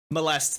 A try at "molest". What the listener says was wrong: Why did you say it like mollusk? Mo. Molest.